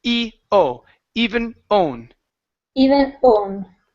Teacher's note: now with own you're still saying hone so take out that that H sound